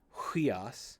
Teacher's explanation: Anytime a word begins with a vowel, it's going to have a rough or a smooth breathing mark. In the case of the rough breathing mark, like in huios, you're going to get that H sound